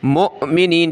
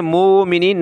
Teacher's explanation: یہ حمزہ اوپر اس کے جزم یعنی حمزہ ساکنہ جھٹکا دے کے پڑھیں گے. مؤمنین، ٹھیک ہے، مومنین نہیں پڑھیں گے، یہ واو کو نہیں پڑھنا، ٹھیک ہے.